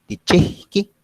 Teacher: porque nosotros marcamos la aspiración, no tanto como otras regiones que la hacen más fuerte